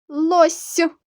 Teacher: лосью останній приголосний с ми вимовляємо м'яко у звуковій схемі він позначений двома рисками